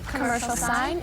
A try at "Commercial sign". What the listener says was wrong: No, pronounce every word. Make a nice round O with the lips. Commercial sign. Commercial sign. Commercial sign.